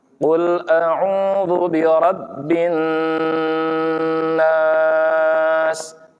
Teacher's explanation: ketika ada nun bertasydid wajib gunnah, ditahan dulu